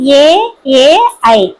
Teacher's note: పెదవి సాయంతో పలికే అక్షరాలని ఓష్ట్యాలు అంటారు. అలాగే కంఠము తాలువు రెండిటిని ఉపయోగించుకొని రెండు రెండిటి నుంచి పుట్టినవి కంఠ తాలవ్యాలు